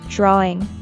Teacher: Note that there's no w sound in drawing.